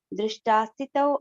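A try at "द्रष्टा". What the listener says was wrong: ద్రష్ట Mataji, అది ద్రష్ట. నా వల్ల కూడా అలాగే తప్పయ్యేది. దృష్ట అని వచ్చేస్తుంది నాకు కూడా. ద్రష్ట even after practising many times also will do దృష్ట ఓన్లీ. ఇక్కడ ద్రష్ట అని వచ్చింది మరి. వ్యాకరణం అట్లా వస్తుంది.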